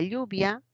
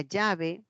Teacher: aama esos procesos se llaman palatalización Por qué se llama palatalización porque una elle elle esa lateral es palatal